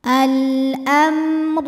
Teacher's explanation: mim sukunnya adalah kita bunyikan mimnya ini dengan jelas izhar alamr huruf ro dibunyikan secara tafkhim karena berhakatah cara membacanya adalah dibunyikan dengan tebal dengan menaikkan pangkal lidah kita